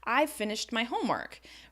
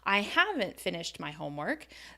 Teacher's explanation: You're going to stress that negative contraction because that's not what I'm expecting to hear.